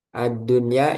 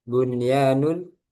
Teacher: Bunyanun satu kata. Nah, maka dia nunnya tidak dimasukkan lagi ke ya, ke huruf setelahnya, tapi dibaca idhar. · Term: idhar mutlak